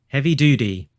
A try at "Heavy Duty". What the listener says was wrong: I think you put your thumb on the scale, with pronouncing that T like a D.